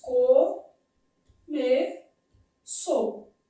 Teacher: O o é vogal, o u é semivogal.